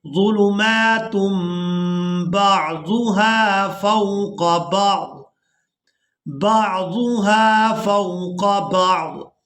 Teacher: یعنی تنوین میں جو نون کی آواز ہے اس کو اس میم کے ساتھ بدل دیں گے